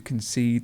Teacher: the stress moves to the end